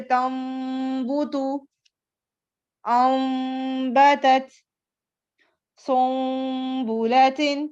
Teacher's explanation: نون ساکن یا تنوین کے بعد اگر با آ جائے، چاہے وہ ایک کلمے میں ہو یا دوسرے کلمے دو کلموں میں آ جائے، تو وہاں ہم نون ساکن یا تنوین کی آواز کو میم سے بدل کر غنہ کے ساتھ پڑھیں گے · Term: اقلاب